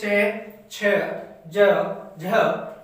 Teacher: च, छ, ज, झ, ये जो चारों वर्ण है वो स्पर्श संघर्षी होते हैं